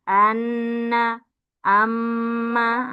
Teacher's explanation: merongga hidung huruf ghunnaah dengung huruf nun dan mim Mim bertasydid anna amma ah dengung dari rongga hiidung.